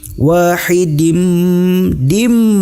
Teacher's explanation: ini adalah idgham bigunnah, ditahan dengan dengung ke hidung.